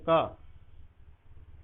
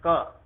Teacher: बाकी पार्ट मुंह का कोई आपस में नहीं टकराता है, कोई जरूरत भी नहीं पड़ती। जब हम बोल देते हैं का तो सिर्फ कंठ से आवाज आती है। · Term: कंठस्थ व्यंजन